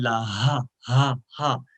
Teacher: یہ جو ہا ہے اس کو سینے سے ادا کرتے ہیں